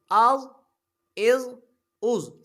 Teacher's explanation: حروف مستعلے میں سے ضا ہے، اس کو موٹا پڑھا جائے گا